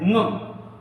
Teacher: इसमें अपने वर्ग के साथ उच्चारण होता है और नासिका से भी उच्चारण होता है। तो हमें ये ध्यान रखना है, ये अंगा नहीं है ना, अंगा खाली है। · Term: पंचमाक्षर